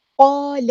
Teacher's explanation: لام کی جو زبر ہے اس کو لمبا نہیں کرنا ہم نے